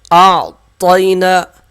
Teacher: پہلے حمزہ کی آواز آئے گی، پھر عین کی آواز کو بالکل صاف پڑھیں گے اور طا کو موٹا پڑھیں گے، یا کو نہیں کھینچیں گے، نون کو 1 الف کے برابر کھینچ کر پڑھیں گے، کاف لام سے مل جائے گا، یہ الف نہیں پڑھا جائے گا۔